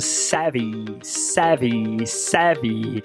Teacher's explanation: Nome técnico: fricativa lábio dental vozeado. É a mesma descrição do F, só que aqui ele é vozeado porque a glote vibra.